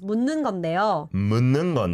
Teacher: 묻는, you don't need to pronounce the 디귿. It just mixes with N. I mean, 니은.